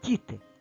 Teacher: перед і стоїть буква д то ж звук д буде м'якеньким